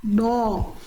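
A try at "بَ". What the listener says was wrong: Lagi, jangan dimonyongkan. Buka saja mulutnya. Bo, angkat pangkal lidah. Tebalnya itu dari pangkal lidah yang naik Bunda.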